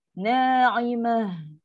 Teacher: Ta marbutah. Dia tukar jadi ha yang sukun. Dia akan bunyi lepas angin. Na'imah. Bunyi ha yang angin yang penat tu.